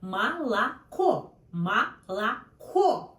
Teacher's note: These two O, first and second, sounds like A, no O.